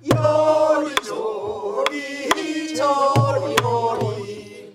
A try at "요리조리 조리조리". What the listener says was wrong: 조리가 약간 늘어지는 경향이 있어요? 안 늘어져요? 일곱 번째 박에서 정확하게 나와줘야 돼요. 엇박이 아니에요. 요리조리 조리조리